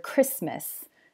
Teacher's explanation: Please note that this can also happen inside just one word, like in the word Christmas. You won't usually hear the T because it's between the S and the M and it's a consonant cluster.